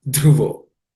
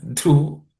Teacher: This dhruvo, the dha is the fourth letter in the th class of consonants. It has to be aspirated.